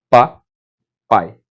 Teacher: O I, ele sai bem fraquinho na palavra papai. Ó, o I sai fraquinho. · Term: semivogal